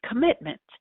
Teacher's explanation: There are 9 phonemes. The first vowel is a schwa. · The stress is on the root of the word mit.